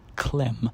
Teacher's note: with a voiceless stop and then the voiced alveolar approximant /l/ straight after it